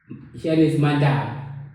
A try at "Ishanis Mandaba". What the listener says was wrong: Actually, it's Ishanis Mandaba. So the B is pronounced as Va. So to a lot of Shona people, they have a tendency to pronounce it as Va, but actually it's Ba. But a V, that is not really a V.